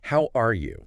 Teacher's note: Imagine saying the words, "How are you?" Yeah. but with a completely flat, level, monotone delivery, like a robot stating the words